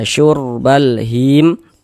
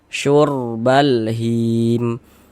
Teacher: Huruf ra sukun sebelumnya harokat dhammah, maka huruf ra sukunnya dibaca tabkhim, dibaca tebal. Sehingganya pangkal lisan kita naik terangkat ke atas ketika kita mengucapkannya. Tebalkan huruf ra-nya.